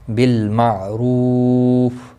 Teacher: بینہم بالمعروف عین ساکن کو ہلانا نہیں، اور پیش کی وجہ سے پر پڑھا جائے گا، رو واو مدہ ہے، ایک الف کے برابر کھینچ کر پڑھیں گے، فا ساکن رہے گا، وقف کی صورت میں، ملانے کی صورت میں اپنی حرکت کے ساتھ پڑھا جائے گا۔